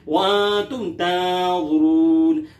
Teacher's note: नून साकिन के बाद ता है जो कि हुरूफ़ इख़फ़ा में से, लिहाजा यहाँ इख़फ़ा किया जाएगा।